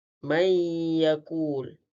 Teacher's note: Apabila idgham ma'al hunnah, cara bacaannya adalah memasukkan huruf nun ke dalam huruf ya beserta dengung dua harakat.